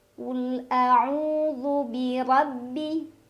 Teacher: Ra dibaca secara tafkhim karena ra berbaris fathah, jadi ra-nya dibaca dengan tebal. Tebal yang dimaksud adalah pangkal lidah kita terangkat.